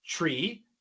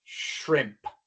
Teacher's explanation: La diferencia es que al pronunciar la sh se sostiene un poco más el sonido.